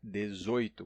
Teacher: Já no Brasil, o comum é dizer 18, com O fechado